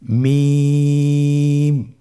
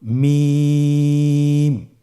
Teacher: মিম হরফটি উচ্চারণের ক্ষেত্রে অবশ্যই বারিক হবে, পাতলা হবে এবং তিন আলিফ টেনে উচ্চারণ করতে হবে। · মিম হরফটির উচ্চারণ স্থান দুই ঠোটের শুকন স্থান থেকে উচ্চারিত হয়